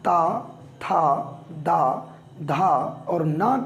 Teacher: इसके बाद अगर हम बात करें दंत की, तो जब हम ता, था, दा, धा और ना का प्रयोग करते हैं, इसका उच्चारण करते हैं, तो हम देखते हैं कि दांतों में हमारी जीभ स्पर्श करती है